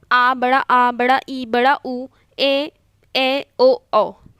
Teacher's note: इसके उच्चारण में ह्रस्व से दुगुना समय लगता है, 2 मात्रा का समय लगता है, मतलब 2 मात्रा लगाने का समय लगता है। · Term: दीर्घ स्वर